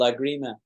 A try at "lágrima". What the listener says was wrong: Lágrimas. The accent is in the first syllable. Lágrimas.